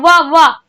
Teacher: वाह जो होता है उसमें ऊपर के दांत होते हैं, वो निचले ओंठ पे आते हैं और यही आपका क्या कहलाता है, दंतोष्ठ कहलाता है, जिनमें दांत और ओष्ठ से बोले जाते हैं।